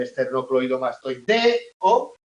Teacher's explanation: el esternocleidomastoideo la única vocal tónica es la e de deo